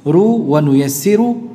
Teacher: Memang ada bacaan lain ru wa nuyassiru, ru-nya tipis.